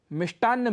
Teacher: ट अल्पप्राण है क्योंकि ट वर्ग का पहला वर्ण है और उसमें कम प्राणवायु लगती है